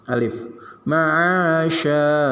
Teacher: sin besar ya, shin sya ngempos sedikit ya.